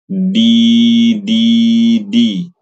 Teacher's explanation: huruf Dal itu punya sifat namanya syiddah syiddah itu kuat jadi bacanya harus kuat